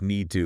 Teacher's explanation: the t almost disappears